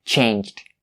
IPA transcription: tʃeɪntʃt